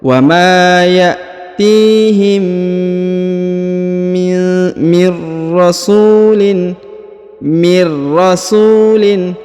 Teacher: huruf mim bertemu dengan mim dan mimnya bertasdid, maka ditahan dan ditekan kemudian didengungkan 2 harokat